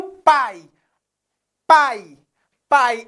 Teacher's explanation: pai é um ditongo oral mas pai também é um ditongo aberto